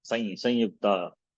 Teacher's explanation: Instead of anuswara, we make that into a nasalized yakara.